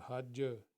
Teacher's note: जिम का कलकला होगा